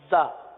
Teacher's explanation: یہ زا دونوں دانتوں کو بند کر کے زبان کو نیچے لگاتے ہیں. زا اس میں سیٹی کی آواز.